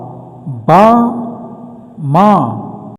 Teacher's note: While making these sounds, there is a light explosion of air.